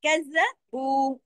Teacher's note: वो दो हरकत खींचेगा। वाव मद्दा है।